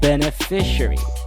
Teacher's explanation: you emphasize the middle fi syllable of the word beneficiary don't forget the schwa right at the end and i hope · beneficiary you emphasize the middle fi syllable of the word beneficiary don't forget the schwa right at the end